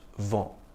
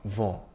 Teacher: The N is not really articulated. The vowel sound before it is nasalized